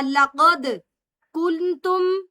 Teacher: لقد میں دال ساکن ہے، قلقلہ ہوگا ، لقد کنتم، کلکلا کہتے تھوڑا سا ہلا کر جنبش دے